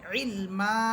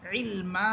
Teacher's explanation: মিমের উপরে আছে দুই জবর, আমরা দুই জবরকে এক জবর বানিয়ে একালিফ টেনে পড়তেছি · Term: একালিফ মদের তৃতীয় প্রকার